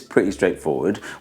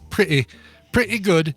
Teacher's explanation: a British accent that drops the T sound